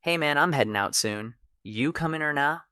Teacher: heading became headin' and coming became comin'.